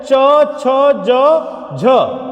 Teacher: तालव्य ध्वनि है, च छ ज झ, स्पर्श कर रही है तालु को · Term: स्पर्श संघर्षी